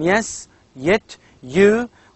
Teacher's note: we have only one sound that is palatal glide